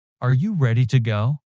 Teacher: Imagine someone asks excitedly, "Are you ready to go?" Notice rising intonation and faster pace.